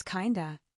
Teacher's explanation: In fast American speech, What's up? often sounds like Wassup?